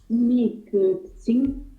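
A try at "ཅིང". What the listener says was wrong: Attention, ici c'est un ching et pas un tsing. C'est un ching. Chagiguchinga ching.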